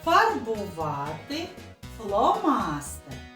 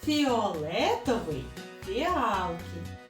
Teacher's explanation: є слова з твердим звуком ф, такі як фарбувати фломастер, а також з пом'якшеним звуком ф слова фіолетовий фіалки